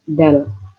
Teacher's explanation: Ya kalau tak tadi lidahnya ke belakang, kalau dal lidahnya agak keluar gigi, agak punjul, agak lebih dari gigi atas, dal. Terus selanjutnya bukan zal ya, tapi zal, hampir sama dengan dal, tapi kalau zal itu kayak ada anginnya, zal itu.